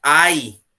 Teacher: Quando você pronuncia ai, eu tenho aí uma vogal e uma semi, que vão ficar juntas. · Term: ditongo